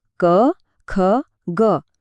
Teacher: બતાવે છે કે અવાજ મોઢાના કયા ભાગમાંથી નીકળે છે દાખલા તરીકે ક વર્ગના બધા જ અક્ષરો કંઠમાંથી એટલે કે ગળામાંથી બોલાય છે